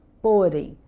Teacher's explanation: vai ter o acento no é, porque a sílaba mais forte é o porém